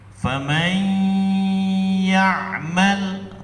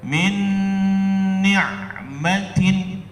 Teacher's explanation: nunnya ngelebur langsung ke dalam ya, tidak ada kompromi lagi, nunnya langsung hilang. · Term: idgham bi gunnah